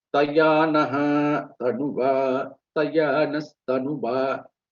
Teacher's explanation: When it is followed by ta, tavarga, then the visargam will get changed into sa.